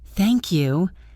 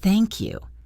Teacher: use a rising intonation to sound friendly